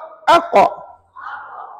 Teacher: pangkal lidah kamu tekan hampir ke anak tekak. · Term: qaf